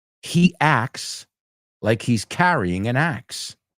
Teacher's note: Hey, maybe in England someone says acts. But I can tell you in American English, that T is not pronounced. It's not acts.